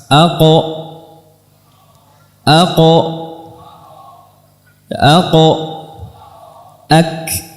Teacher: Adapun huruf kaf dia juga bertemu dengan al-hanak al-azmi, di antara keduanya, langit-langit lunak dan langit-langit keras. Aqo ak. Dan huruf kaf memiliki sifat hamas.